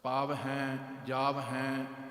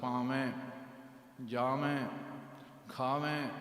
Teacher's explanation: ਸੋ ਇਸ ਵਾਸਤੇ ਮੰਨੈ ਪਾਵੈ, ਸਿਆਣਿਆਂ ਨੇ ਉਚਾਰਨ ਬਣਾਇਆ ਪਾਵ ਹੈ। ਹਾਹੇ ਨੂੰ ਵੱਖਰਾ ਨਹੀਂ ਉਚਾਰਨ ਕਰਨਾ। ਪਾਵ ਹੈ, ਜਾਵ ਹੈ, ਇਸ ਰੂਪ 'ਚ ਨਹੀਂ।